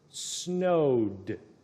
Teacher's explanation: And snowed is the past tense, so it has the ED, but don't make the ED sound, just the D only.